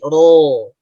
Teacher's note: ketika ia dibaca O, itu pangkalnya langsung naik.